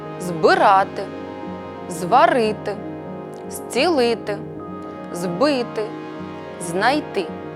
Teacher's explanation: с в українській мові вживається префікс з який передаємо літерою з перед дзвінкими приголосними префікс з вимовляється дзвінко наприклад збирати зварити зцілити збити знайти з метою досягнення милозвучності мовлення